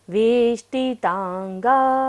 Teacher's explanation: आपाद कंठ श्रंखल श्रंखल वेष्टितांगा। वेष्टि में देखिएगा मूर्धन्य श है, मूर्धा से उच्चारण करेंगे।